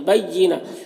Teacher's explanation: गोलता हाय साकिना से बदल जाती है